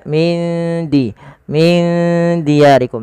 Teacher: huruf dal itu makhrajnya dari ujung lidah kita yang bertemu dengan perbatasan antara gigi atas dan gusinya.